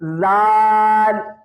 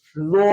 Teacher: وا جو لفظ ہے اس کو پڑھنے کا جو طریقہ ہوتا ہے، زبان کی نوک زال کی طرح ہلکی سی دانتوں سے باہر آئے گی، لیکن آواز کو گلے کے شروع سے موٹا کر کے پڑھنا ہے. زال کو منہ سے آواز آئے گی، لیکن زو کو گلے کے شروع سے موٹی آواز آئے گی